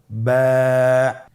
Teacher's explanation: এর মাখরাজ হলো আপনার 2 ঠোঁটের বিজা অংশ থেকে আপনি উচ্চারণ করবেন।